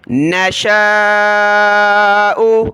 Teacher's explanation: شین کے اوپر مد ہو تو شین کو کھینچنا ہے